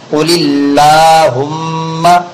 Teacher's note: اللہ کے لام کے باریک ہونے کا قاعدہ اس لیے کہ اللہ کے لام سے پہلے زیر والا حرف آیا ہوا ہے